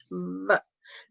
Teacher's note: as you pronounce, you can see that it's a labiodental sound